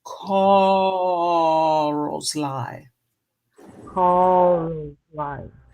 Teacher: Leave the R off completely and elongate that first vowel